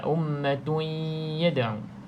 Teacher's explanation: maka kita tak boleh baca jelas. Kita kena baca dengung. Masuk dalam ya.